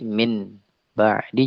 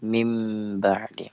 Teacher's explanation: Membolak-balikkan maksudnya adalah nun sukun dan tanwin atau nun sukun, ya, dibaca jadi mim ketika bertemu dengan ba. Saya jadi min ba'di jadi mim ba'di. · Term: iqlab